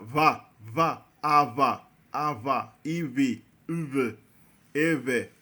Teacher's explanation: Não tem um fechamento total dos lábios. Os lábios apenas se aproximam. · Na verdade, a fricativa bilabial sonora.